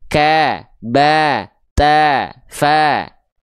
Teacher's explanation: ketika teman-teman melafalkan fathah yang keluar dengan bunyi vokal A, tipiskan pelafalannya